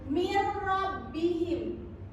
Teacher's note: Karena ada nun sukun bertemu dengan huruf ro. Ya, betul, karena nun sukun bertemu dengan huruf ro dan bacanya harus Tidak dengung. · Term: idgham bilauna